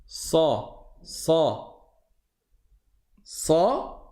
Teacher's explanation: comme on monte la langue à l'arrière de la bouche alors ça va surélever le le son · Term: emphatique